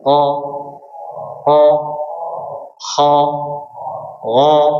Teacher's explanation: sisa huruf isti'la yang lainnya, qaf, ghain dan kha, ini berkaitan dengan bagian belakang, bukan bagian ujung lidah. Ya, jadi ketebalannya tidak sempurna.